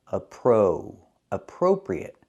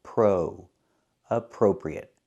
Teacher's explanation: We cannot say appropriate. We have to use a long O for the second syllable.